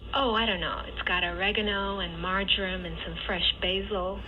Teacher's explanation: it just kind of flattens out at the tail end which is why it's called a plateau pattern